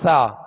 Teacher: सा को हम पढ़ते हैं नरमी के साथ सा इसको सीटी आवाज में नहीं पढ़ते तो इसको नरमी के साथ पढ़ना नरम पढ़ना यह इसकी खूबी